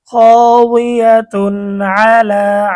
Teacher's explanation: ইজহারের 6 হরফের একটি হচ্ছে আইন। তানবিনের পরে ইজহারের হরফ আইন আসার কারণে গুন্না ছাড়া স্পষ্ট পড়তে হবে।